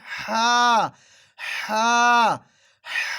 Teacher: ہا ہا بالکل حلق کے درمیان سے نکالنا ہے